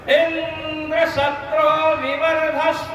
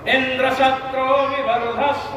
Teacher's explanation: बहुप्रिय आद्युदात्त इंद्र शत्रु में ई पर जोर देंगे · ई पर जोर नहीं लगाना था, ई पर जोर लगा दिए तो महाराज बहुप्रिय समास हुआ, इंद्र ने ही मार डाला लड़के को।